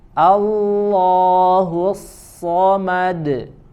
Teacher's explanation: huruf shad punya sifat ya, sofir, ya, dijelaskan desisannya, kemudian juga desisannya juga disertai dengan sifat tebal.